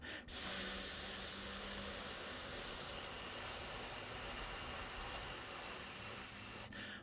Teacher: if we make an s sound we don't feel any vibration so we call this voiceless